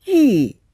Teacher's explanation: It's a fourth tone, falling.